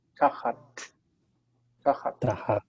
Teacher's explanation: But in Hebrew, you can't swallow that T. It has to be pronounced tachat.